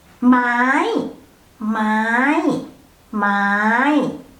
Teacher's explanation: it has high tone, so pronounce it high to the roof without falling